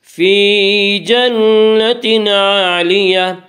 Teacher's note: جب وقف کریں گے تو گول تا وقف کی صورت میں ہائے ساکنہ بن جاتی ہے